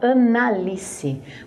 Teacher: Mas quando você fala esse nome, você fala Analice, você fala junto, você fala um único A.